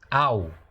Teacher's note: Lembrando que esse A aqui, a pronúncia original desse kametz, é como se fosse A-O, ao, como se fosse ao.